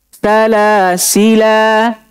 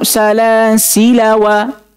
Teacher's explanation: Kalau wakaf kita baca panjang. Tapi kalau kita sambung itu wajib dipendekkan.